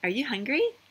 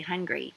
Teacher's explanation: you would go up at the end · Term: yes or no question